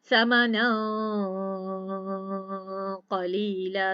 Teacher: अब हलक क्लोज नहीं करती, समनन क़लीला, साथ साथ मैं अपने नाक को भी प्रेस कर रही हूँ कि गुनगुनाहट मेरे नाक में से है। अब मैंने हलक को क्लोज नहीं किया, फ्रंट से ज़बान को नीचे वाले दांतों की जड़ के पास रखा, मीम के बाद क़ाफ की अदायगी की।